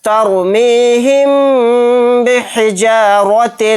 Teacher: میم ساکن کے بعد با آ گیا تو یہاں پر بھی اخفائے شفوی کا قاعدہ ہوگا، یعنی یہاں پر بھی غنہ کے ساتھ اخفا کرنا ہے